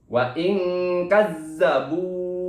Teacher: za-nya di sini ada tasydid yaitu guna, makanya harus ditahan atau ditekan.